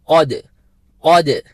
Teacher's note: قوف کو مفخم طریقے سے، پر طریقے سے، فل ماؤتھ جس کو کہتے ہیں، موٹا کر کے ادا کرنا